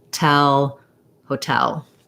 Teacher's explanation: So I do say O for the ho syllable, hotel, with a clear vowel, but it's going to be short, and my length is going to be on the tell syllable. So it just sounds like ho, tell with a true T.